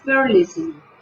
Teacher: El acento será al comienzo